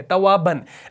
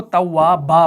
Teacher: जब हम तव्वाबन पर वक्फ करते हैं ना तो हम तव्वाबन से उसको तव्वाबा पढ़ते हैं वक्फ की सूरत में, ऐसे एक जबर के साथ तव्वाबा, इस तरीके से पढ़ते हैं वक्फ की सूरत में।